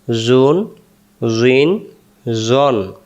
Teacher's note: জ অক্ষর জিহ্বার আগা থেকে মোটা করে পড়তে হয়